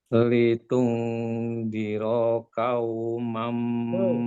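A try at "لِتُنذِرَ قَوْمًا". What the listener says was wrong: Huruf di kita itu untuk qaf itu qau, tidak bukan ka-nya. Qau, jadi langsung mulutnya bulat.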